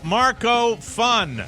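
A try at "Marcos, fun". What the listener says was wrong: No, you have to say Marcos and then stop for a second.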